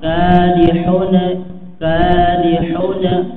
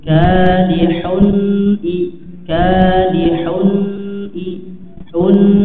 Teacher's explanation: Nah, ketika mengucapkan idhar halki maka perhatikan pada nun sukun atau tanwinnya ya, jangan sampai ada suara pantulan ya, seperti kol-kolah kadihuna kadihuna ya, tapi kaidahnya nun sukun masih mengandung gunah ya, ditahan kemudian dimasukkan ke rongga hidung